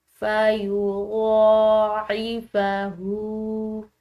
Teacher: یہاں پر ہا کے اوپر الٹی پیش ہے جس کی وجہ سے ہم نے اس ہا کو لمبا پڑھا ایک الف کے برابر